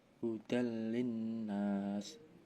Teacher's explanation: Idgham bila guna karena fathah tanwin bertemu huruf lam